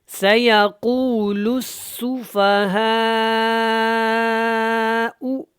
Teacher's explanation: تو یہاں پہ قاف موٹا ہے اور لام کو اس سین کے ساتھ اچھی طرح ملا کے پڑھنا ہے شد کی وجہ سے، اور یہاں پہ مد متصل ہے، اس کو آپ نے کھینچ کے لمبا کر کے ادا کرنا ہے۔